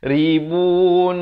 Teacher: Lafz jalalah dibaca tebal 2 harakat